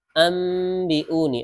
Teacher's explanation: ada nun sukun bertemu ba, nunnya berubah menjadi mim, namanya bacaan iklab